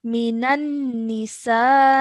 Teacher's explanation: the sa sound needs to be stretched for at least 4 seconds because of the maddul ghabir.